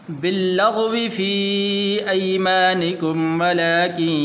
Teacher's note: بعض حضرات اس کو اس طرح پڑھتے ہیں باللغو، واو کو جو ہے لمبا کرتے ہیں، حالانکہ واو کو لمبا نہیں کرنا